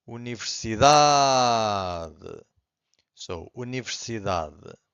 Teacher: the final syllable, the last one, it's very weak. It's not silent, but it's very weak. It's hard to hear.